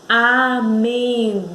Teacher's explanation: Vejam que o in deu um impulso, deu uma subida. Então, ela é a sílaba tônica, tá bom?